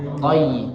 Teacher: tayra itu memiliki bacaan lin yang harus diucapkan dengan ringan, yaitu dengan ya